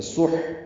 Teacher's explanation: ہا ساکن ہے، اس پہ ہمس ہوگا، اس میں سانس جاری رہتی ہے پڑھتے ہوئے